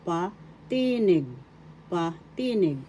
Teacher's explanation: in English first syllable pa second syllable t third syllable nig the accent is in the second syllable